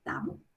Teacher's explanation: તો ઘણી વાર એમ થાય નાના હોઈએ તો કે તાંબુ કેમ બોલે છે? પણ કારણ કે જે અનુસ્વાર છે એ ગયો છે અને દીર્ઘત્વ આવી ગયું છે